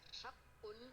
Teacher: حق یہاں قاف کو تفخیم کرنا ہے